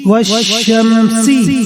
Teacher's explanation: ادغام کی وجہ سے لام شین بن گیا ، اسی لیے ہم نے لام نہیں کہا اور اس کے